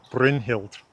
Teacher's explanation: stressed on the first syllable